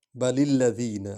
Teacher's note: لام کو لام میں ملائیں گے